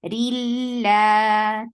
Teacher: This is idgham without gunna, so you're not keeping sound in your nose at all. So rilla. For kasra, give e sound, and then attach with lam, and then lam will be 2 counts long.